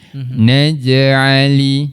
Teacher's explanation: kita jumpa jim sukun, kita lantunkan huruf jim